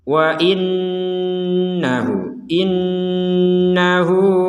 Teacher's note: ada Nun bertasdid Nun bertasdid ini harus kita dengungkan